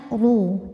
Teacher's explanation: ru huruf ro dibunyikan secara tafkhim karena harakatnya damah cara membacanya ru tebal pangkal lidah naik